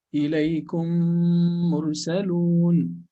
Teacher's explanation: Okay, if you want to know if there's idgham, actually you don't open your lips between the first and the second meme. So your lips should be closed.